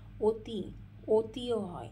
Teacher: এই অতির অটা কিন্তু ও এর মতন উচ্চারিত হচ্ছে, তাই জন্য এগুলোকে অ এর সংবৃত বা বিকৃত উচ্চারণ বলা হয়।